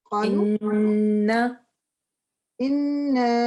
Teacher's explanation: ان part کو 2 حرکہ لمبا کرنا ہے ناک میں آواز کے ساتھ